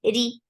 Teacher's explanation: Ri for kasra is E sound. And it is light because whenever ra is with kasra, it is light.